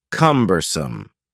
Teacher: The word cumbersome has three syllables and the stress is on the first syllable